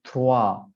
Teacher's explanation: we say trois and we don't pronounce the S.